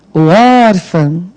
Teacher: porque é som nasal, não é o A da cebola, não é o A da mesa · Qual é a sílaba tônica de órfão? O órfão. É o or